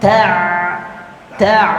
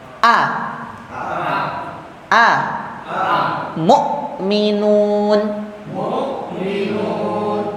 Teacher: bunyi Ain itu mengalir sedikit kalau huruf hamzah atau huruf alif tadi Hamzah ya itu tidak mengalir